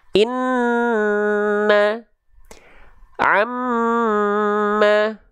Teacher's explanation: Nun dan mim bertasdid ditahan dua harakat